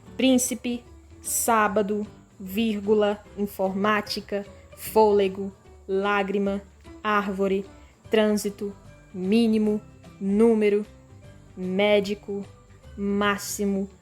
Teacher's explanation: pessoal todas essas aqui todas essas palavras elas são proparoxítonas certo todas as sílabas tônicas estão na antepenúltima sílaba